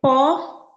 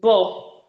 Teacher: when you pronounce the word po and bo, initially there was a total blockage of air in the mouth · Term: bilabial sound